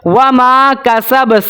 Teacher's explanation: سین کو باریک سیٹی کے ساتھ ہم پڑھیں گے